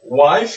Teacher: I, c'est une diphtongue, hein, parce qu'il y a deux sons à l'intérieur